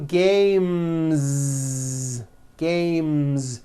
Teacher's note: when you add an s the s should also be voiced